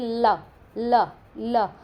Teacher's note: यह आपका पार्श्व ध्वनि में होती है और इसको वर्त श्य में रखा जाता है